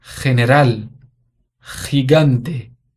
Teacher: Gato, gorila, gusto. Mas quando ela vem antes de E ou de I, ela tem o som de R em português. É aquele som de garganta.